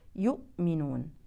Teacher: ضروري نقراها بطريقه صحيحه وهي بانغلاق الحبلين الصوتيين تماما · ننتبه لعدم قلقله الهمزه الساكنه